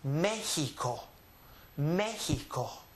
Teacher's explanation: The sound of this letter for the Aztec Indians or the indigenous people with their pronunciation is going to be the English H sound, which is actually the Spanish J.